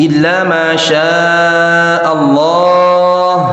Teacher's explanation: Waqaf di situ boleh 2 sampai 6. Illa jangan ditahan Pak, cukup dihentak tapi halus. Illa 2 harokat, ma 2 harokat, syaa ini wajib 4 Pak ya, minimal 4 harokat.